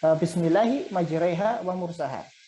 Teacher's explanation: Al-imalah yang berarti miring, ya. Dia mengucapkan harokat antara fathah dengan kasroh, jadinya E